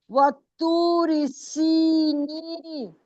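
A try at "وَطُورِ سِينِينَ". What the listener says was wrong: وقفاً، وطوری سینین ہے، وطوری سین نہیں ہے،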